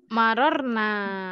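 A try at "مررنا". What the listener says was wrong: Nah, marorna, nanya panjang.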